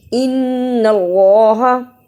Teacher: نون مشدد ادا کیا اور اللہ کو موٹا پڑھا